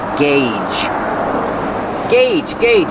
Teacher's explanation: Use the hard g and the long A, like say and pay.